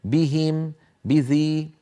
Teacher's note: انا استبعد ان يفخمهما القارئ لانهما مكسورتان